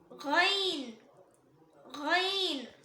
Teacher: இது தொண்டையோட ஸ்டார்டிங்ல இருந்து வரும்